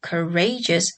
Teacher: the complex word courageous has a stress on the syllable ray